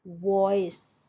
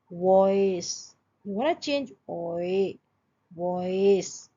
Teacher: वॉइस, शुरू हुआ ओ से और खत्म हो रहा है ई पे। वॉइस, यू वांट to change ओए, वॉइस। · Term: डिप्थोंग